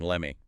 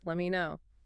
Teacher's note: The T in let drops before the M